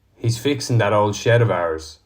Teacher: the G of ing often isn't pronounced in other words in is pronounced in he's fixing that old